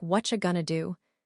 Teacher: The t in what disappears. Are you becomes cha and going to becomes going to.